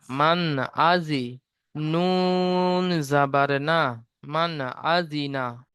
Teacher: নুন সাকিনের পরে হুরুফে হালকির ছয়টি অক্ষরের মধ্য থেকে হামজা এসেছে, তাই নুন সাকিনের আওয়াজকে বিনা গুণায় জাহির করে পড়তে হবে।